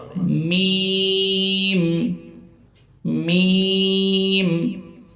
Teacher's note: দুই ঠোটকে একত্রিত করে মিম উচ্চারিত হবে